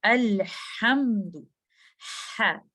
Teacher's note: इसमें अगर हम देखें है, ये मिडल ऑफ द थ्रोट से आ रहा है, हमारे एपिग्लॉटस और back wall of द throat से आ रहा है